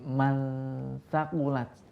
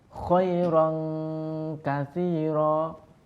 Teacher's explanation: ketika kita berdengung, makhraj kita itu sudah diletakkan kepada makhraj huruf di depannya. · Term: hukum ikhfa